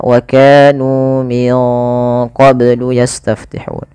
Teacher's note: ini nunnya disamarkan ke huruf qaf karena dia ada bacaan ikhfa. Di sini ikhfanya ikhfa ab'ad, ikhfa yang jauh, ya, yang jauh daripada makhraj, daripada huruf nun.